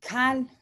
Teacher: with a glottal stop that means raise up or lift up